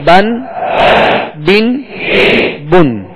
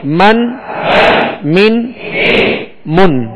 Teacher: با کا جو مخرج ہے وہ دونوں ہونٹوں کے تر حصے سے, اور میم کا جو مخرج ہے وہ دونوں ہونٹوں کے خشک حصے سے ادا ہوتا ہے